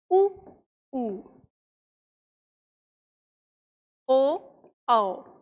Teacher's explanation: जिन स्वरों के उच्चारण में होठ गोलाकार होते हैं उन्हें वृत्तमुखी स्वर कहते हैं।